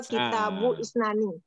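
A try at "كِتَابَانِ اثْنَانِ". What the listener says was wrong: Yang kedua kitabanis nani. Ya dibaca wasol, jangan diputus. Kalau diputus kurang pas. Kitabanis nani.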